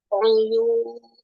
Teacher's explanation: Jadi Bu, harokat domah dia si pangkal lidahnya ngangkat belakangnya Bu. Jadi jangan oyun itu dia yun itu terlalu landai itu belakangnya oyun.